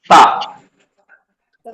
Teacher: ता का मखरज है फिर जुबान की नोक और ऊपर के दोनों दांतों का किनारा जुबान थोड़ी सी बाहर झांकना